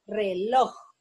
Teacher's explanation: lleva la sílaba tónica en loj